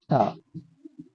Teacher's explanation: ट जो तीसरा ग्रुप है ये हमारा मूर्धन में आता है